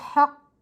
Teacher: ہا کے اوپر زبر ہے، زبر کو ہم بغیر کھینچے بغیر جھٹکا دیے معروف اور متوسط طریقے سے پڑھتے، لیکن آگے قاف مشدد حرف 2 بار پڑھا جاتا ہے، ایک بار اپنے سے پہلے والے حرف کی حرکت سے مل کر، دوسری بار اپنی حرکت کے مطابق، جیسے، اور مشدد کو ہم مضبوطی اور جماؤں سے پڑھتے ہیں، جیسے ہا قاف زبر حق۔